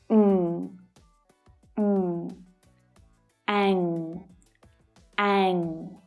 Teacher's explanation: my mouth is open slightly when I make this sound, and the back of my tongue is right up at the soft palate in the back of my mouth.